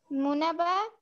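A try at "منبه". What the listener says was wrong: Munabbe, this is kasra.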